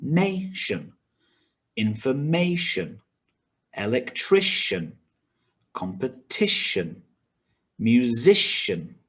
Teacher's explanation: the stress is on the syllable before shun.